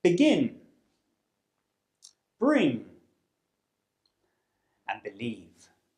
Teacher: It's a sound from the consonant pairs group and it's called the voiced bilabial stop. And this means that we use both of our lips to block our mouths. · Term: B sound